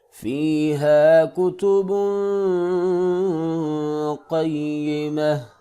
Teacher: با کے اوپر تنوین ہے لہٰذا یہاں پہ اخفا ہوگا، ناک سے آواز کو نکالیں گے، قاف کو موٹا کر کے پڑھیں گے